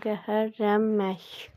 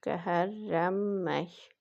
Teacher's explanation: 4 hecalıdır. Vurğu sonuncu hecanın üzərinə düşür.